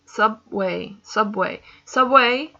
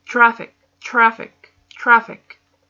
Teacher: you feel the stress in the beginning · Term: syllable stress